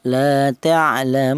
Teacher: boleh dibaca qasr, yaitu panjangnya cukup 1 alif seperti mad tabi'i